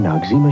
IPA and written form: nɒkˈsiːmə (Noxzema)